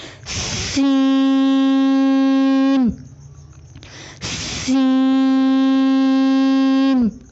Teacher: سین کی ادائیگی میں زبان کی نوک کو سامنے والے نیچے کے دو دانتوں کے کناروں سے مضبوطی سے لگا کر باریک اور سیٹی جیسی آواز میں پڑھیں